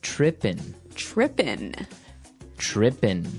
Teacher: It doesn't have the G at the end, which isn't really grammatically correct, but that's kind of the way it's pronounced.